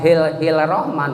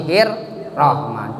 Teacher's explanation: Alif lam syamsiyah, karena alif lam tidak ada harkat sukunya atau sembunyi, berarti lamnya tidak kelihatan, bacanya harus diidgham kan, bukan hil rahman tapi hir rahman. Jadi seolah-olah lamnya tidak ada, tidak kedengaran.